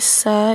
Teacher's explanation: Kemudian selanjutnya aufasa, ini sa ini mad tabi'i ya, dibaca panjang 2 harokat karena fathah bertemu dengan alif